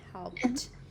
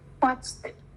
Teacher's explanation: Thì mọi người nhớ này, cứ vô thanh thì nó sẽ đi với vô thanh, đúng không? Thì khi mà kết thúc một đuôi vô thanh thì mình sẽ phát âm là t